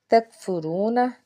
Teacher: کاف کو باریک پڑھیں گے، را کے اوپر پیش ہے، را کو پر پڑھیں گے، واو ساکن سے پیچھے پیش ہے اس لیے ایک الف کے برابر کھینچ کے ادا کریں گے۔